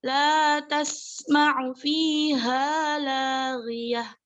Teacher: ta marbutah yang dibaca sukun berubah menjadi ha.